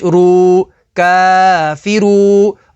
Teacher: را کے اوپر پیش ہے تو اسے پر یعنی موٹا پڑھیں گے اور واو ساکن سے پہلے پیش ہے تو واو مدہ ہوگی.